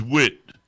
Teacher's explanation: Now you got TH at the end of the word, Usually it makes like a T sound.